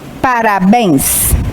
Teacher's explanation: Todas essas palavras são oxítonas porque tem a última sílaba tônica.